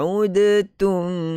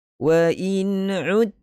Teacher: Dal qaf tha jim dal yang mati kita tak qalqalahkan kerana ini kita masuk dalam bab idgham. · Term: Idgham mutajanisain